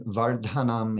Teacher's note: the da in vardhanam is Dental